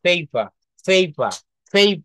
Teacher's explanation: এই পেপার না শেষের র টা কিন্তু বলা যাবে না।